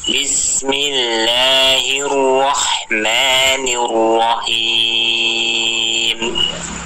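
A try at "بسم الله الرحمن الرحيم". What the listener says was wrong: Huruf H-nya dijelaskan lagi Pak ya. Hahihu. Ya itu tenggorokan tengah. Tenggorokan bagian tengah. Ha. Ha. Dipedaskan lagi.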